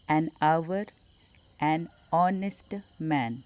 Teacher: We don't pronounce H in these both words. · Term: silent H